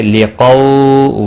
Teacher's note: واو لین ہے، اور نرمی کے ساتھ کھینچ کر ادا کریں گے